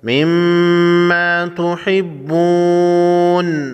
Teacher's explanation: مما تحبون، میم مشدد، جس حرف پر یہ تشدید ہو، تشدید والا حرف مشدد حرف کہلاتا ہے۔ مشدد، میم مشدد نون مشدد، دونوں کو غنہ کر کے پڑھیں گے۔